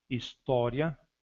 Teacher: Exemplo de semivogal mais vogal. História, o i da sílaba ria é uma semivogal e o a é uma vogal